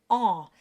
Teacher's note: Here we have the nasal en sound, which starts with an ah, and a bit of air escapes through the nose, and you get en.